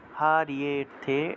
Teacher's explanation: ইয়েতে গিয়ে একটু টান দিবেন, তাহলে হবে হারিয়েথে, এইভাবে ইয়েতে গিয়ে একটু টান দিলেই হবে, যেহেতু এখানে একটা লুপ্ত অ আছে।